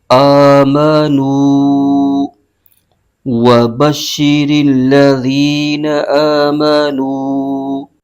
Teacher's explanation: واو ساکن سے پہلے پیش ہو تو واو مدہ ہوتا ہے، تو اس کو ایک الف کھینچ کے پڑھیں گے۔